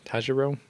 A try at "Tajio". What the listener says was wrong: Tajio. I didn't see an R in there. I think it's just Tajio.